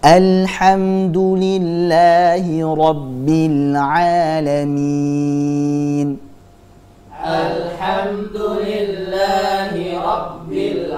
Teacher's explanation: huruf lam jangan diqalqolahkan jangan dipantulkan sebagaimana kita tahu bahwa huruf lam itu bukan termasuk huruf kqolah